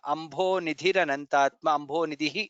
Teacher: Ambho Bha is mahaprana, Nidhi Dha is mahaprana. Ambho Nidhiranantatma, Ambho Nidhi, two mahapranas there. Maho Dadhi Dha is